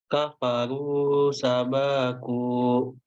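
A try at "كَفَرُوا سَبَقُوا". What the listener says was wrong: Baknya dibaca pendek. Ulangi lagi.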